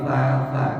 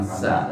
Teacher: Kalau ta, ujung lidah keluarin ta. Kalau sin kecil, gigi dirapatkan sa.